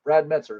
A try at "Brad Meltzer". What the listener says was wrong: There's an L. Brad Meltzer.